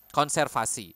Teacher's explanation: We would pronounce the V as F here, okay? It would sound weird if you try to pronounce this as conservasi, okay?